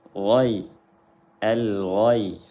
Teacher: Di sini perlu diperhatikan saat memindahkan pelafalan lam ke ghin, karena ini makhrajnya jauh dari hujung lidah kepada tenggorokan. Jadi hati-hati jangan sampai lamnya tawalud atau memantul. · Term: izhar qamari